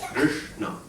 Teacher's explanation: It's not a long vowel, but after the ri, there's 2 consonants, sha and na, right? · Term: guru